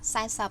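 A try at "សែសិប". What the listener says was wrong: Sai. But it sounds like SAP, like SAP. Yeah, no, it's B, but when I hear you pronounce, it sounds like SAP. Like tonle sap, like the leg.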